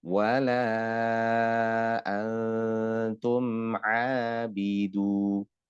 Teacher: mim sakinah ketemu ain ini dibaca idhar, ya, tidak boleh ditahan terlalu lama